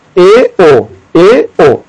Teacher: इसके बाद देखिए आएगा आपका अर्ध संवृत्त स्वर, यानी आधा बंद रहेगा, तो देखिए ए ओ, ए ओ, आप इन दोनों को बोलकर देखिए तो इसमें आधा मुख आपका खुलेगा